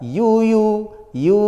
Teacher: mad thobii ini panjangnya dua harakat